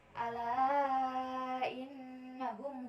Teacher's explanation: pada kata innahum terdapat hukum bacaan yaitu gunah. Cara bacanya yaitu didengungkan.